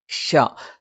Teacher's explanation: നാവിന്റെ മധ്യഭാഗത്തിന്റെ രണ്ടറ്റങ്ങൾ മേലെ അണ്ണാക്കിൽ സ്പർശിക്കുകയും നാവിന്റെ മധ്യഭാഗം കൊഴിഞ്ഞു നിൽക്കുകയും അതിലൂടെ കാറ്റ് സഞ്ചരിക്കുകയും ചെയ്യുന്ന ഒരു രീതിയാണ്